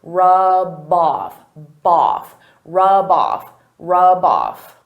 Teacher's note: Because rub off is a phrasal verb, they go together. I can take that B sound and connect it to the next word, but I have to combine them together.